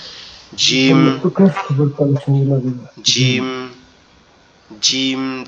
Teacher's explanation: কণ্ঠনালীর শেষ ভাগ হইতে জিম, জিম, জিম আওয়াজটা হবে আমাদের জিহ্বার তালু উপরের তালুর সঙ্গে লাগবে, আমাদের জিহ্বার মধ্যকান উপরের তালুর সঙ্গে লাগবে, লেগে উচ্চারিত হবে জিম, জিম, জিম।